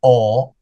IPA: ɔ